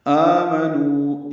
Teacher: آ 2 حرکات لمبا کریں گے، نو واو مد ہے، 2 حرکات لمبا کریں گے